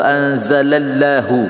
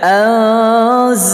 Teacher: lafaz Allah dibaca tafkhim tebal